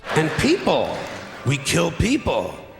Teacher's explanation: The pitch of his voice goes up each time, and he takes a couple big pauses.